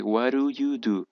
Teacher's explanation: la d se pronuncia como una r